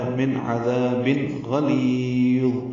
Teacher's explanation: آنے کی وجہ سے اظہار ہے، عذاب ذا الف مدہ ہے، تنوین کے بعد غین آنے کی وجہ سے اظہار ہے ، من عذاب غلیظ غین پر ہے، لی یا مدہ ہے،